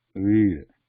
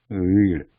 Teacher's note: There is no complete touch when we say ra there.